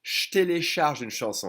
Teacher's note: drop the E and try to connect the J and the T, and it'll be turned into a sh